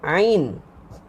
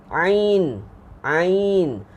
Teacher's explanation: Huruf ain dia terletak pada halkum yang tengah. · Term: halkum tengah